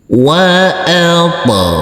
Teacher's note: huruf ghain kita baca panjang dengan panjang 2 harokat karena di atasnya ada huruf alif kecil yang berdiri tegak lurus.